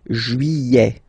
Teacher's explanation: Don't pronounce this final T, E-T here at the end.